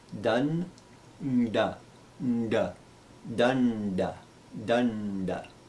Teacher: the first da is dental, the second da and the na there are cerebral.